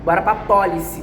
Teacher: Repare, a sílaba tônica forte forte tá no pó.